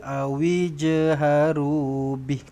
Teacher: Bih ini adalah mad sillah tawilah. Tetapi kalau berhenti pendek sahaja.